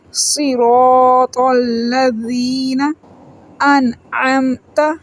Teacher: یا مدہ ہے، 1 سیکنڈ لمبا کریں گے، صراط الذین انعمت۔ نون ساکن ہے، یہاں پہ اظہار ہو رہا ہے · نون ساکن ہے، یہاں پہ اظہار ہو رہا ہے۔ آگے حلقی لیٹر عین ہے جو گلے کے درمیان والا حصے سے پڑھا جاتا ہے۔